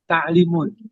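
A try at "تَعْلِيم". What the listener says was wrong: Linya panjang, Pak.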